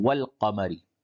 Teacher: الف کو نہیں پڑھیں گے بلکہ واو کو لام سے ملائیں گے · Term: حروف قمری